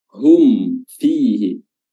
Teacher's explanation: Hum fihi, ikhfa ya, jangan. Tapi mimnya harus tetap jelas dan izhar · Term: izhar syafawi